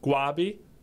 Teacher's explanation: they pronounce it Guabi, so there's no R pronunciation in it